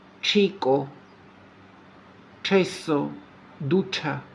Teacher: արտասանվում է Չ հնչյունակապակցությունը, ինչպես հայերեն Չ, բայց ավելի եռանդուն ձևով՝